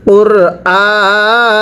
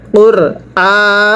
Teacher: কফ উচ্চারণের সময় গলায় হালকা ধাক্কা হবে